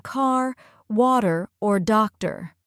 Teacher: broader a sound compared to British English and don't forget about the r sounds they're much stronger and more pronounced in American English